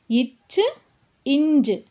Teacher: இந்த எழுத்துகள் நாவினுடைய இடைப்பகுதி நடு அன்னத்தினுடைய இடைப்பகுதியை பொருந்துவதால் பிறக்கின்றன